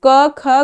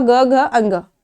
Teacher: अब क वर्ग में आपको पांच व्यंजन दिया हुआ है तो स्टार्टिंग के दो व्यंजन जो है वो अघोष कहलाते हैं और लास्ट के थ्री व्यंजन आपके सघोष कहलाते हैं